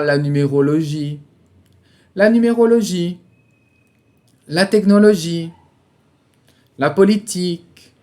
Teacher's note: Sempre na última sílaba, a gente alonga um pouquinho mais.